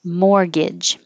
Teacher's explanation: no t and the first g sounds like a ga and the second g sounds like a ja